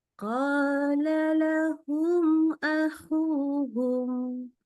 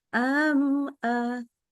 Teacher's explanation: kalau mim ketemu hamzah, tidak boleh tambah dengung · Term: idhar syafawi